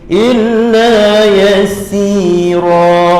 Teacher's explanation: Masing-masing 2 harokat 2 harokat. Jangan lebih. Ra tu jangan lebih daripada si. Sama panjang. · Jadi illa lam sabdu tak dengung. Jangan dengungkan. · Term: mad iwab